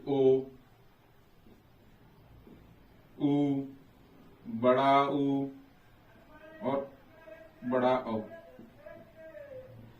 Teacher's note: जब हम इनको बोलेंगे तो हमारे ओठों के बीच में एक व्रत बनेगा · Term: वृत्ताकार